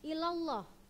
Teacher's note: Nah, kenapa enggak ilallah tapi ilallah? Maka dia, karena dia sebelum lafaz Allah berharokat fathah, dia dibaca tebal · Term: hukum taglib